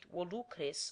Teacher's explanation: I shall read volucres with the acute on the middle syllable, because although that syllable is short by nature, it is long by position, else the last two syllables would form an iambus, which its position in the hexameter does not allow.